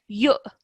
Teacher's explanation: I'm hearing a slight h sound. This is not, this is a hamza sound.